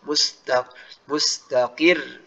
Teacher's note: Tapi kalau waqaf mustaqir. Jadi roknya tipis tapi dia diangkat suaranya.